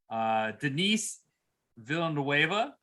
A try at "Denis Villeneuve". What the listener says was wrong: Do not pronounce the S to Denis. It is silent in French. Do not say Denis, but rather Denis Villeneuve. Denis Villeneuve. Denis Villeneuve. Denis Villeneuve.